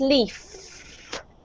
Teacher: When you have an F, a F, there's no sound coming out of your throat, so it's leaf.